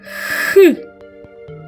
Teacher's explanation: ваші губки і зубки у вільному положенні а кінчик язика опущений вниз спинка піднята вверх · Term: звук х